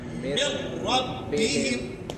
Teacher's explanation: ادغام تو ہوگا مگر غنہ نہیں ہوگا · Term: ادغام تام, تام